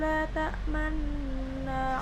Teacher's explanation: Kemudian la ta'manna, la sendiri di sana ialah mad tabi'i, kemudian ta'manna di situ ada hukum gharib yaitu hukum ismam, mencondongkan mulut ketika mengucapkan la ta'manna